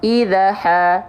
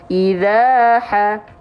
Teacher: Nih, alif bisa hidup kalau sebelumnya fathah. Zalnya dibaca jadi 2 harokat. Kenapa? Karena ada fathah ketemu alif.